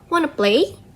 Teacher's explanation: The T sound merge with the vowel, and this is and it's called as assimilation due to fast casual speech.